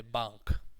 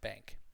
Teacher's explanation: in English it's a very nasal sound, so it's almost like bank.